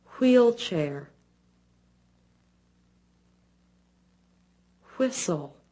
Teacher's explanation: the wh sound is made by briefly puckering the lips to form a small circle then letting the mouth open a bit the teeth are slightly apart but not shown the tongue is